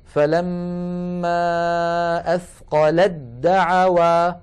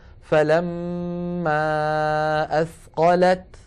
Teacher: ساكنة، ودعوا أولها دال متحركة والتاء والدال من المخرج عينه، لذلك نحول التاء إلى دال ثم ندغم الدال في الدال